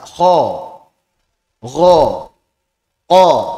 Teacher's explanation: Kho ini dia naik istiala tapi tidak sampai terkumpul dia infitah istiala plus infitah maka kita ucapkan dengan tebal tapi tidak sampai tebal banget